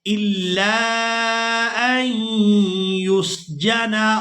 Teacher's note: اب یہاں پر بھی آپ لوگ پہلا حرف ساکن اور دوسرا حرف مشدد دیکھ رہے ہیں تو ہم نے ساکن حرف کو چھوڑ دینا ہے، حمزہ کو ہم نے یا مشدد کے ساتھ ملانا ہے